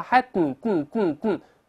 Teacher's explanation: 鼻子在动气儿，怎么叫鼻腔爆破呢？鼻子出气儿 · 注意舌尖不动，顶住上它